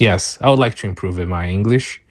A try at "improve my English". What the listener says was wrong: I'm not sure what you said between improve and my. It's like you said improve, where you maybe pronounce the E at the end of improve, which we don't normally pronounce. It's silent. Or maybe you said improve it. Improve it, my English.